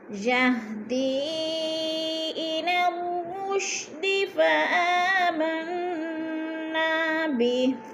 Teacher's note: یہدی پہ مد منفصل ہے، 4 الفی مد ہے، 4 الف کے برابر ہم نے اس کو کھینچ کر پڑھنا ہے